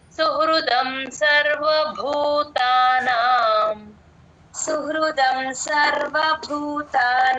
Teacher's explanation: భూకి మహాప్రాణం ఉంది గమనించండి